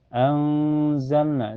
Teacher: Zalna setelahnya ada lam sukun mutlak ya. Awas jangan sampai mantul baca jelas ya.